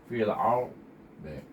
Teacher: kita akhir dengan dad, iaitu angkat pangkal lidah, letak tepi lidah ke geraham atas